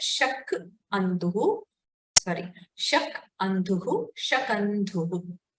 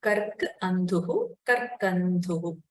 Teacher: The previous part is omitted. In Shakandhuhu, the first akara is deleted, only the second akara is retained. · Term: Pararupa